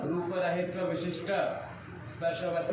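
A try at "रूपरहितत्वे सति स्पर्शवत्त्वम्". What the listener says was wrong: रहित्व क्या होता है जी? विशिष्ट को बोलते तो चलता, लेकिन तुम रहित्व कर रहे हो, रहितत्व नहीं बोलना आ रहा, दो तो नहीं बोल पा रहे, कैसे अवखड़ हो?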